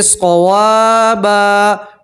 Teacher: واو کے ساتھ بھی الف مدہ ہے, اس طرح ایک الف کے برابر کھینچیں گے اور 2 زبر کی تنوین کے اوپر آپ وقف کریں گے تو 2 زبر کی تنوین کو ایک الف اور زبر سے پڑھیں گے